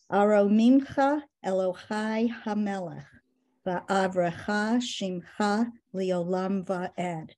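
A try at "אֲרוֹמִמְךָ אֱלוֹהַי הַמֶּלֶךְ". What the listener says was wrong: Very well done.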